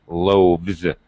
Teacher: loaf two loaves when I add the S it becomes loaves it turns into a V and the S pronunciation is like a z